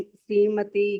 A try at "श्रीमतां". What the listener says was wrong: देखिए श्रीमती नहीं है, यहाँ पे श्रीमताम है।